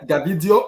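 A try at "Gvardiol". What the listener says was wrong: I think the G is silent.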